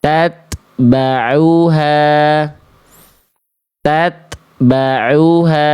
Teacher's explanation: ta sukun dilafalkan jangan sampai keluar bunyi es. Es itu bunyi es itu punyanya huruf sin dan shad.